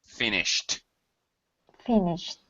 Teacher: I really should be hearing that aspiration that that puff of air